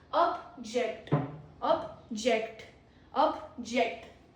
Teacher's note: It is a verb because it has stress on second syllable